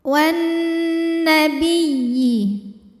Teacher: Wan, nunnya dihukumi dengan gunnah musyaddadah karena nun bertasydid. Maka nun didengungkan, bunyi dengungannya tahan kurang lebih 2 harokat.